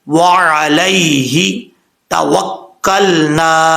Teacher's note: دو نقطوں والے جو تا ہے، یہ زبان کی نوک اوپر والے دانتوں کی جڑوں سے لگے تو تا پڑھا جاتا ہے